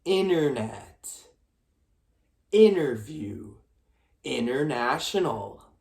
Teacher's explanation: T is silent after N. There is no strong T sound in the middle or the end of the word.